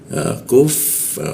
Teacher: Lalu masuk ke ku di siku tenggorokan, lidahnya diturunkan, ada hembusan udara ketika membaca ku